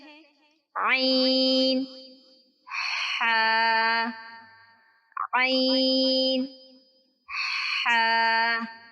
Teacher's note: ہمارے حلق کا درمیانی حصہ، جہاں یہ ایک ابری سی ہڈی محسوس ہوتی ہے، وسط حلق کہلاتا ہے۔ وسط حلق سے 2 حروف ادا ہوتے ہیں: عین، ہا۔